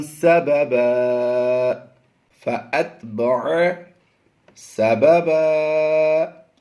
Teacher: 2 زبر کی تنوین کو ہم وقف میں الف مدہ سے بدلتے جا رہے ہیں۔